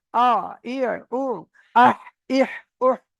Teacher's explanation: হালাক বা কণ্ঠনালীর মাঝখান হতে আইন হা উচ্চারিত হয়।